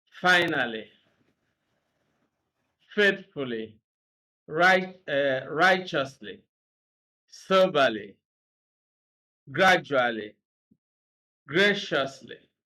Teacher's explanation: three-syllable words that end in ly also have stress on the first syllable